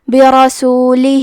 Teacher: آخر میں ہا کے نیچے کھڑی زیر ہے، یہاں حکم ہے مد صلہ صغرا تو ہم اپنی آواز 2 مد کے برابر لمبی کریں گے